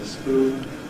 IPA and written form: spʉːn (spoon)